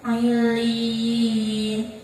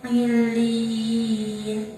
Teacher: apabila ada madya didahului huruf ya yang bertasydid dan berharokat kasroh, maka cara bacanya panjang. Panjangnya 1 alif atau 2 harokat. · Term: mad tamkin